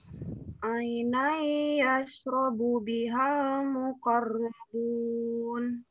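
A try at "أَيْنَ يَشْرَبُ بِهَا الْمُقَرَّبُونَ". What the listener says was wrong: Ainai. Tahan aja yang lama. Bukan bigunnah, tahan yang lama.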